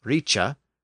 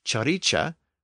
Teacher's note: sound change which had occurred in these old English words where the k sound had shifted to the CH sound